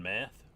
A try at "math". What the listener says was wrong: It must be the way that you're saying it. It sounds like you're saying meth, like methamphetamines, but I'm guessing you're talking about math.